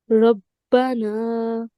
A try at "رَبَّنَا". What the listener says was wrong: ربنا، را کو موٹا پڑھیں۔